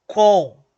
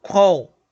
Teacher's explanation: esse M, ele vai anasalar o O. Ele vai transformar esse O num som nasal. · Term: O anasalado